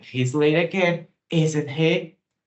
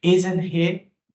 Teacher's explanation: a entonação enfática na question tag sugere surpresa ou frustração com o fato da pessoa estar atrasada novamente